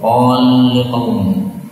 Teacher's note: lam ketemu lam boleh idgham